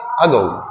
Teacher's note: कैसा आ, इससे थोड़ा बड़ा और ए से छोटा, जो ए होता है इससे छोटा, आ और ए के बीच का एक साउंड है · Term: उल्टी ई